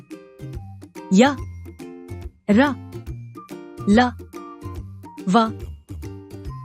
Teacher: इनका उच्चारण लगभग स्वर और व्यंजनों के मध्य में होता है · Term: अंतस्थ व्यंजन